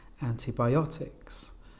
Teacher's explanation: the stress on the fourth syllable